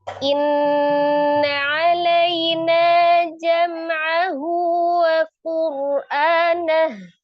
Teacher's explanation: Inna ada nun tasdid, nun musadah ya. Wajibul gunah akmalun paling sempurna dua sampai tiga harakat ditekan dan ditahan di suaranya dimasukkan ke rongga hidung.